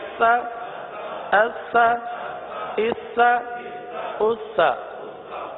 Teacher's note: آگے سا والا حمزہ سا زبر اس، سا زبر سا، سا سا وہ حرف ہے جو بغیر سیٹی کے ادا ہوتا ہے، صحیح ہے، سا بغیر سیٹی کے ادا ہوتا ہے